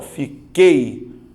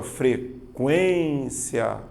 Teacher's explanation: Você vai notar que o som do U não aparece. Ou seja, você tem apenas aqui, ó, um ditongo. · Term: ditongo decrescente oral